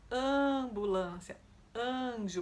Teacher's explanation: Ninguém fala aanjo, aanbulância, a gente diz ambulância, anjo, porque depois da letra a vem um som nasal e ela fica coarticulada, ela pega um pouquinho o som que vem depois dela, por isso ela se torna an. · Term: som de AN